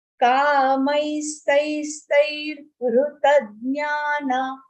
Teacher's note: After the second stai, there is a half ra.